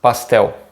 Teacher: in Brazilian Portuguese, the L at the end of the words has this very short sound. It doesn't sound like an L.